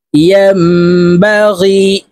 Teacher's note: নুন সাকিনের পরে ইকলাবের হরফ বা আসছে, তো এই মিম দ্বারা পরিবর্তন করিয়া গুন্নার সহিত পড়ব।